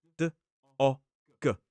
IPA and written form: dɒg (dog)